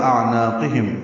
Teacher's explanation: حمزہ اقصی حلق سے، عین وسط حلق سے نکالیں گے